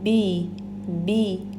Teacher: زیر کو ہم شارپلی پڑھیں گے، یعنی اپنے جبڑے کو پراپرلی نیچے لے جانا ہے، بے نہیں پڑھیں گے بلکہ بی بی۔